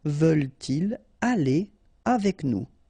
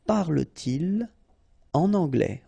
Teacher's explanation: So, no liaison after your pronoun.